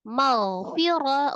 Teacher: ghainnya sifatnya adalah roghah walaupun dia huruf tebal ya dibacanya isti'la dengan mengangkat pangkal lidah tetapi tetap roghah dialirkan